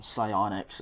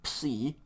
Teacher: We usually just don't say the P, but in Greek we will say the P, okay? It's really a PS, psi.